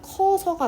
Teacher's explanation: 자, 그 다음에 이제 모음 탈락 같은 경우 크어서 합쳐서 발음하면 커서가 되죠. 으랑 어 중에서 으가 빠지고 어만 살아있는 경우예요. 그러니까 얘는 으 탈락입니다.